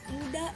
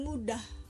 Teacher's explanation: persis sama misalnya muda dengan mudah merupakan pasangan minimal sebab tidak tiadanya bunyi ha pada kata pertama dan adanya bunyi ha pada kata kedua menyebabkan kedua kata itu berbeda makna jadi bunyi ha adalah sebuah